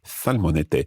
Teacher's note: the th sound if you like is replacing s as it happens in some parts of Spain